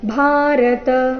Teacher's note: ಕೊನೆಯ ಶಬ್ದ ಭಾರತ ಭಾ ಮಹಾಪ್ರಾಣ ದೀರ್ಘ ಬರಬೇಕು